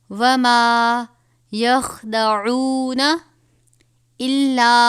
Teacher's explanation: چھوٹی مد ہے، 3 الف کے برابر کھینچ کر پڑھیں گے